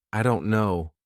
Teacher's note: And this D is actually replaced with R